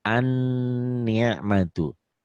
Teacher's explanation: Nunnya karena bertasydid jadi gunnah.